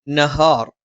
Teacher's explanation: ന നാവിന്റെ അറ്റം മേലെ മുൻപല്ലിന്റെ മോണയിലാണ് ഹ തൊണ്ടയുടെ താഴ്ഭാഗം നഹാർ ന നാവിന്റെ അറ്റം മേലെ മുൻപല്ലിന്റെ മോണയിൽ ഹ